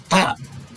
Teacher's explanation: Di sini tak, ya kan, membunyikan tak itu adalah ujung lidah yang di depan itu disentuhkan kepada pangkal gigi seri atas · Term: makhraj ta